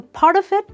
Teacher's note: So part of it becomes part of it because the t in the word part gets linked to the o in the word of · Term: connected speech